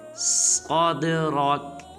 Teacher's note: جب صاد کو دال ساکن کے ساتھ ملائیں گے تو دال کو قلقلہ کریں گے یعنی کہ ہلائیں گے، اور صاد کو پر ادا کریں گے اور را کو بھی پر ادا کریں گے